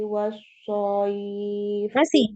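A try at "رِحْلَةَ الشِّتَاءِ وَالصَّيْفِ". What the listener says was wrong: Masih di tengah. Rihlatasyita. Ini yang tengah lidah ya harusnya ya. Nah, ini malah dibaca dari ujung lidah nanti. Rihlatasyita ini baru tengah lidah. Masuk di sod ini ujung lidah ya. Rihlatasyita iwasoif. Di tengah lidah lagi yang shin tadi ya. Rihlatasyita disebar ya, tersebar suaranya di mulut. Kalau huruf sod tadi ini terkumpul ya suaranya di mulut, sedangkan huruf shin ini nyebar ya, suaranya nyebar. So ini terkumpul. Kalau shin ya nyebar. Sha gitu ya. Nah, beda ya.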